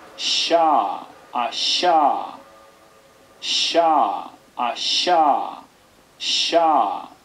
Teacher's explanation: Una, del orden de las palatales, todavía, que se translitera con una S, con un acento grave, y el alfabeto fonético internacional describe como fricativa postalveolar sorda. Lo cual ya estamos fastidiando porque no es alveolar, es postalveolar.